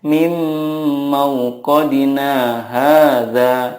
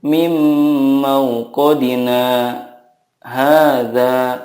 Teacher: dari kata mauqadina ke hadza harus ada saktanya. Tidak boleh langsung dibaca seperti ini.